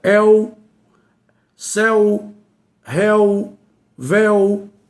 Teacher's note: Então são palavras que são monossílabas com tônicos abertos. é um monossílabo tônico aberto, porque o som é aberto.